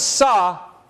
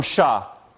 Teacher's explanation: Sa is made at the alveolar ridge, front of the mouth. Sha is made right behind the alveolar ridge, not front of the mouth. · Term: anterior